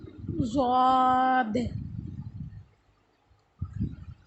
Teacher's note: زبان کی کروٹ اور اوپر کی 5 داڑیں